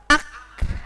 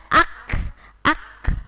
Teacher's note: Tetap kah, tapi ada udara yang keluar. Ak. Nah, kalau kita kan ak, tapi karena sifatnya hames, maka ditambahi udara.